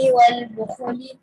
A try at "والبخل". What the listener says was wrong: بخل نہیں پڑھیں گے, ہم کیا پڑھیں گے؟ خو کے اوپر کیا ہے؟ پیش نہیں ہے, جزم ہے. والبخلی,